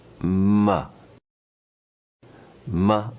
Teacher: of this row the nasal sound represented in green is ma the nasal sound at the lips is ma